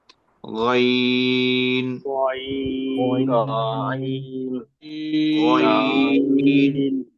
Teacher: এটার মাখরাজ একটু খেয়াল করেন। হলকের শেষ প্রান্ত বা তালুর নরম অংশ সহ জিহ্বার গোড়ার অঞ্চল